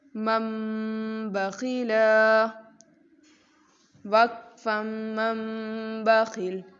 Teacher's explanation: یہاں نون کی آواز کو ہم نے میم سے بدل دیا ہے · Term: اقلاب